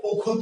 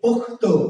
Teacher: খ ছিল মহাপ্রাণ, হয়েছে কি ক অল্প প্রাণ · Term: অল্প প্রাণী ভবন